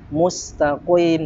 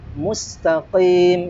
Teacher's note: Jadi qaf ini makhrajnya adalah dari aqsal lisan, ya. Lidah paling dalam atau pangkal lidah, dan cara melafadzkan huruf qaf ini tidak perlu memoncongkan bibir. Mustaqim tidak perlu, ya.